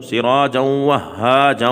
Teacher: آگے واو آ گیا، یرملون کا حرف ہے تو ہم ملا کر پڑھیں گے اور غننے کے ساتھ پڑھیں گے